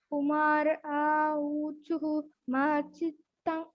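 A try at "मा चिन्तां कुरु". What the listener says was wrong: Chinta. Because you're saying chitta, but it is not chitta, it is chinta. Ma chintan kuru.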